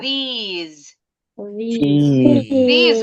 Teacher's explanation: These sama those, bunyi S-nya seperti Z. Emang Z ini, bunyinya Z.